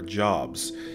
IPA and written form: dʒɒbz (Jobs)